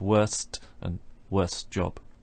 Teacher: you've got four consonant sounds in a row that's quite difficult to do in English and one of them the T simply disappears